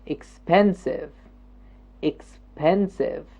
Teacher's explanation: The second syllable. Expensive. The pen is jumping up.